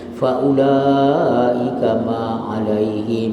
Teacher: mim dengan mim idgham mislain, dengungkan 2 harakat